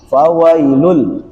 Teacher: Ada tanwin bertemu dengan huruf lam di sini. Tanwin bertemu dengan huruf lam ini adalah yang disebut dengan idgham bila gunnah · Apabila ada tanwin atau sukun, huruf yang berharokat sukun atau nun mati atau tanwin bertemu dengan huruf lam, maka bunyi sukunnya itu, bunyi tanwinnya itu langsung disambung kepada huruf lam dan ro-nya